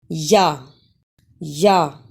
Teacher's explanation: या जबान का दरमियान और इसके बिल मुकाबिल तालुक मिलाप से अदा होता है